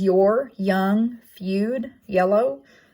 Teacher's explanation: It is voiced, palatal glide, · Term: the y sound